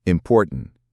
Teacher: The T in important is after an N, so it might soften or disappear.